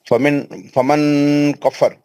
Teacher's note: नून फमिन साकिन के कफर, बाद काफ है, काफ है तो जी, आवाज छुपा के इख्फा करना।